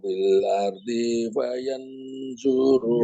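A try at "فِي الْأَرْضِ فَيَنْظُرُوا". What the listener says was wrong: Lagunya Pak, fil ardi fayanzuru. Coba lagunya disambung saja. Bapak lagunya disambung sehingga nggak ada kesempatan untuk tiap kata Bapak berhenti. Monggo, nadanya seperti monggo Pak.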